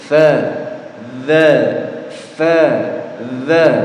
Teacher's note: tempat keluar atau tidak jemaah satu di mana tempat keluarnya Iya punggung ujung lidah ditemukan dengan ujung gigi seri bagian atas jadi ujung lidahnya muncul sedikit